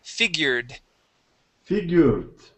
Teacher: Here you had said figured with a T sound. Let's try and get a D there.